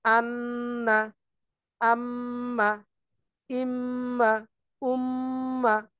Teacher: গুন্নাটা হচ্ছে মূলত নাক দিয়ে আমরা পড়ার চেষ্টা করব · নাক দিয়ে উচ্চারণ করতে গেলে এটাকে অবশ্যই গুন্নার সাথে নিতে হবে